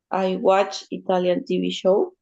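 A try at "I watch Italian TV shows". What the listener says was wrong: Ok, TV shows. Hay que pronunciar la S, acuérdense. En inglés es importante que la S suene al final. Hay que pronunciarla, hay que esforzarnos por pronunciarla. Ok, shows, things, songs.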